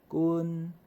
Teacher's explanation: 你像讲滚第一声相对较长